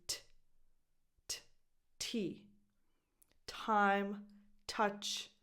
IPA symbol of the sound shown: t